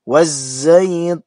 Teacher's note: Waz masih sama dengan yang wattin tadi, yaitu alif lam syamsiyah. alif lam menghadapi zai dimasukkan kepada huruf zainya. Jadi bunyi lamnya dihilangkan.